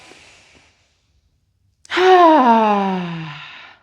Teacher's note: you start out high pitched, but as you let it go, it's starting to get a little lower, and it's starting to settle a little lower. Whereas in the beginning, you feel it right in your nose or your nasal cavity, after you push it out some more, you feel it more in your throat and in your chest. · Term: sigh of relief